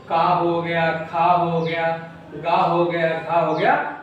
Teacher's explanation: ये हमारे कंठ से बोले जाते हैं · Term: कंठ व्यंजन